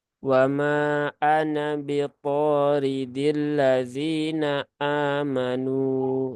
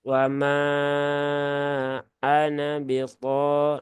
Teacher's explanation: mad jaiz itu panjangnya 4 atau 5 harokat